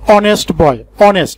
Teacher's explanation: এইখানে যে এইচটি রয়েছে সেই এইচ এর পরে দেখো একটা ভাওয়েল ও রয়েছে, এইচটা উচ্চারিত না হয়ে সেই ওটা উচ্চারিত হচ্ছে। যেহেতু এইচ এর উচ্চারণ হচ্ছে না এবং ওর উচ্চারণ হচ্ছে, ওর উচ্চারণের সাউন্ডটা আসছে ভাওয়েল সাউন্ড, সেহেতু আমরা এখানে অ্যান ব্যবহার করি।